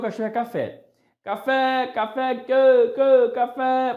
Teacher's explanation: A sílaba tônica de café recai na última sílaba, o acento tônico recai na última sílaba. Café é uma palavra oxítona.